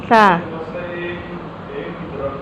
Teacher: اس کے بعد آتا ہے ثا۔ زبان کی نوک جب ثنایا اولیہ کے کنارے کو لگے تو ثا ادا ہوتا ہے